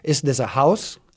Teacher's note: In is this a house, you sort of have some kind of what we call rising tone at the end of the sentence on house. So your voice starts at a low level and you go up, right?